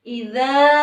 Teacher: Idza maka harus dibaca panjang dua harokat. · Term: mad tabi'i